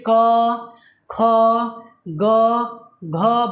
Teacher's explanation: क वर्ग का जितने भी वर्ण हैं ये हमारे कंठ से निकलते हैं। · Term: कंठ व्यंजन